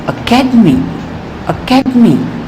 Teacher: in the word academy okay tell me the second syllable is set with greater force Academy Academy here the syllable care is stressed and all other